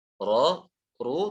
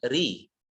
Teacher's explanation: Ra, ru tebal, dan yang tipis hanya ri.